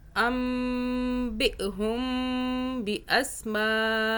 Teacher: میم ساکن کا قاعدہ ہے، آگے با آ رہا ہے تو یہاں ہم میم پہ غنہ کریں گے 2 سیکنڈ کا